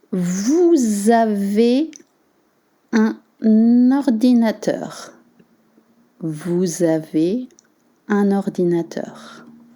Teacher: And then you want to link un ordinateur.